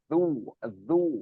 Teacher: Makrotnya di ujung lidah. Zal itu ujung lidah keluar sedikit, ketemu gigi seri ujung-ujung gigi seri atas.